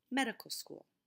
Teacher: Medical has three syllables the stress is on the first syllable